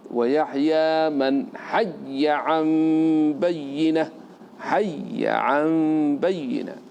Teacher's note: الباقون ماذا فعلوا؟ أدغموا الياء في الياء وفتحوا الياء